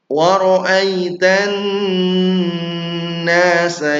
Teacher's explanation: Bukan waroai, bukan e tapi i waritan nun bertasydid ghunah yang dipanjangkan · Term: gunnah yang dipanjangkan